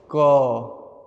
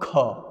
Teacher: क कम वायु ख ज्यादा